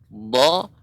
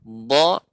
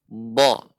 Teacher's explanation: Pengucapan dha bisa dengan kedua-dua tepi lidah, dha atau bagian kanan, dha atau kiri, dha. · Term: huruf dha